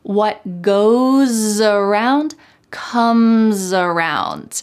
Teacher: that S is going to sound like a Z in American English.